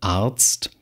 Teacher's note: das R wird halt zum Vokal